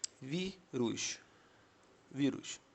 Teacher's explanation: Você está vendo que a sílaba tônica aqui é no vi.